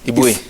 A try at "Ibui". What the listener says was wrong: Ifoi. Ifoi, the B becomes an F.